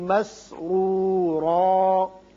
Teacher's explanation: مسرورا میں دونوں را پر ہوں گے، اس کے اوپر ضمہ پیش ہے اور اس کے اوپر 2 زبریں ہیں.